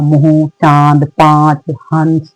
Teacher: अनुनासिक जो है बेटा मुख और नाक दोनों की उसकी ध्वनि निकलती है